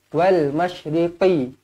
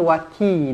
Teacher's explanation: Wal masyriqi tebal, ini ki nipis. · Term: qaf tebal